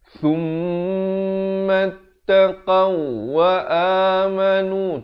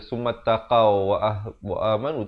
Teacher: Wa amilus salihati thum ujung lidah. Jangan baca sum jadi huruf sin nanti.